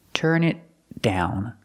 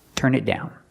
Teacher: The T in it is a stop T.